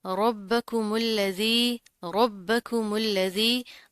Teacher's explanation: रॉ मोटा पढ़ा जाएगा, बा के ऊपर तशदीद है, जमा कर मजबूती से पढ़ेंगे। जाल बरीक है, बगैर सिटी के अदा होगा।